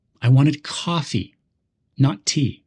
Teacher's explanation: Here, coffee is stressed to show contrast.